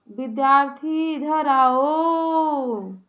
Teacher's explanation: जब आप ओम का उच्चारण करेंगे, लंबा खींचेंगे तो उसमें तीन मात्रा का समय लगेगा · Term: प्लुत स्वर